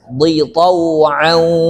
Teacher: Di-nya tipis pendek ya.